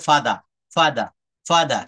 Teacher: যেমন আমরা ফাদার বলি, ব্রিটিশরা কোনো শব্দের শেষে যদি র বা আর থাকে এটার উচ্চারণ করে না